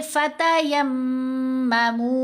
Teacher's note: या को मीम से मिलाते हुए जब गुन्ना करेंगे तो लिप्स तो हमारे दोनों जुड़ जाएंगे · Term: गुन्ना असल